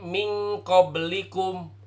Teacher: Bukan pakai suara hidung tapi disamar-samarkan. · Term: ikhfa